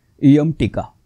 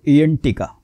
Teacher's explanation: इयम टीका. आणि न हा तालव्य आहे, म्हणजे जीभ अख्खी उलटी फिरते जवळजवळ 90 डिग्रीमध्ये आणि टाळूला लागते. त्यावेळी उच्चार होतो इयंटिका.